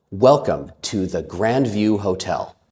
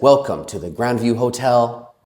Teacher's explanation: When I said that, I made sure to speak confidently and to lower my voice at the end of the sentence. If I said, welcome to the Grandview Hotel, it sounds like I'm not done speaking yet.